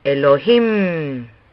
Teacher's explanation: hay un énfasis en la última sílaba de Elohim